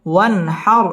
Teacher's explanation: ওয়ান হার, ওয়ান এটা হচ্ছে ইজহার, নুন সাকিনের বামে হা আসছে, হা ইজহারের হরফ, গুন্না ছাড়া স্পষ্ট করে পড়তে হবে। ওয়ান হার, র পুর হবে এবং রয়ের মধ্যে ওয়াকফ করতে হবে।